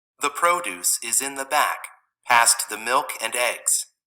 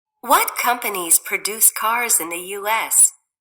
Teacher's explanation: Nouns have the first syllable stressed, verbs have the second syllable stressed.